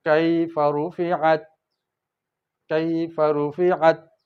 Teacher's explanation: زبان جڑی رہے گی، قلقلہ نہیں آئے گا۔